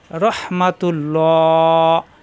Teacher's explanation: আল্লাহ শব্দের ডানে পেশ আসছে এজন্য আল্লাহ শব্দ ল হবে লা হবে না